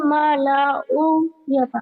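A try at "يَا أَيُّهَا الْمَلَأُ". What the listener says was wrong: Mala'uin. U-nya pendek kan nggak pasangan, bukan matobi'i. Kalau mala'u dengan wawu mati, iya. Itu kan dengan alif, jadi bukan matobi'i ya. Enggak panjang, kan nggak pasangan, bukan matobi'i. U-nya kan domahnya kan harus dengan wawu mati baru panjang. Pendek aja, pendek.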